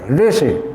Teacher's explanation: ऋषि में र का उच्चारण आप करते हैं, ऋ का उच्चारण नहीं करते ऋषि, क्योंकि थोड़ा सा जिह्वा को ऊपर ले जाकर उच्चारण करने में कठिनाई होती है।